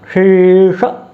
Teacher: एक तालव्य शकार है और एक मूर्धन्य शकार है, दोनों का उच्चारण आप अच्छे तरीके से करें।